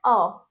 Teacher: अ जो होता है ओ और आ के बीच का होता है